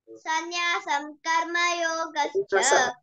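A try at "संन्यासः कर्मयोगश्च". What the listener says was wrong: సన్యాసం కాదండి, సన్యాస కర్మయోగశ్చ.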